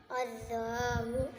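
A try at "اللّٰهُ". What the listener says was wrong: इसको मोटा पढ़ें, लफ्ज़ अल्लाह को। अल्लाहु।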